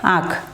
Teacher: आँख लिखा है लेकिन आँख हम कहाँ से हमारी आ रही है, नासिका से आवाज आ रही है, इसलिए इस पर क्या होगा, अनुनासिक होगा, अनुस्वार नहीं होगा